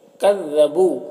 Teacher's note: یہاں پر واو مدہ ہے، اسے بھی ایک الف کے برابر کھینچیں گے